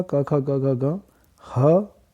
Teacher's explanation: अकार का, कवर्ग का क, ख, ग, घ, ग, ह और विसर्ग का उच्चारण स्थान कंठ है